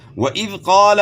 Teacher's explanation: قاف کو موٹا کرنا ہے، الف مدہ ہے